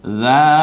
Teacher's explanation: খাড়া আকারের কারণে এক আলিফ টেনে বলবো এবং রালটা আমরা নরম আওয়াজে বলবো